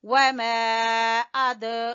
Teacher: وَمَا أَدْرَاكَ، یہ دیکھیں یہاں پہ یہ ہے مد واجب اور یہ ہے مد جائز، شکل میں بھی فرق ہے۔ وَمَا أَد، دال کے اوپر ہلکا قلقلہ کریں گے